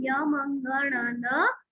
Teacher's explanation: ये सारे nasal sound है, बिना नाक की सहायता से हम इनको बिल्कुल नहीं बोल सकते